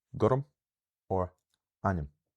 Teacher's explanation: So, what's happening here is there's only one vowel sound written in these words, but a small unstressed vowel is added in between the consonants to allow the word basically to be easier to pronounce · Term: epenthesis